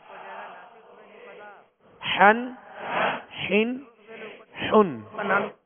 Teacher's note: حا جو ہے یہ وسط حلق یعنی درمیان حلق سے ادا ہوتے ہیں. حا، دو زبر حن، حا، دو زیر حن، حا دو پیش حن، حن حن حن۔